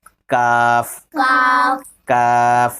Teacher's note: کاف کا مخرج زبان کی جڑ سے ذرا نیچے ہٹ کر وہاں سے کاف نکالیں گے.